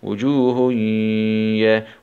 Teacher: هاء ضمتين مع الإدغام بغنة في الياء المفتوحة